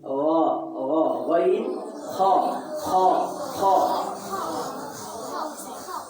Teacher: গইন খ এই দুইটা হরফ হলকের শেষ হইতে উচ্চারিত হয়